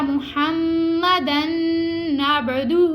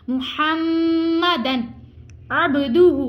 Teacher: اب دیکھیں آگے دو زبر ہیں, دو زبر کے بعد عین آ گیا ہے, تو یہاں پہ اظہار کا قاعدہ لگ رہا ہے, یعنی تنوین کے بعد حروف حلقی میں سے کوئی حرف آ جائے تو وہاں پہ اظہار ہوگا, یعنی غنہ نہیں کریں گے. اب یہاں پہ ہم نے کیا ہے محمدن, اگر یہاں پہ کوئی اس کو ایسے پڑھے گا محمدن نعبدہ, تو یہاں پہ وہ غلطی کرے گا, غلطی نہیں کرنی, یہ مسٹیک ہوگی.